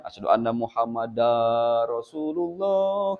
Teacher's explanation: Dina huruf dal ieu diidghamkeun kana ro. · Dar, jantan dibacana langsung diidghamkeun kana ro. Dar, enggak boleh dibaca panjang. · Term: idgham bila guna